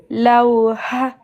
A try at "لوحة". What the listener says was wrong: Non. Ha, ok, mais il y a de l'air qui sort après. La lettre ha. C'est pas la même, c'est pas deux fois la même lettre.